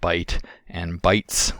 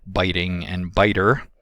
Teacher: we have bite and bites with the same T, but biting and biter with that flap sound